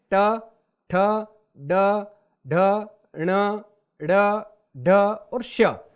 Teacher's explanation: इन सबका उच्चारण जो है कठोर तालु के अगले भाग से होता है, जहां मूर्धन्य कहा जाता है।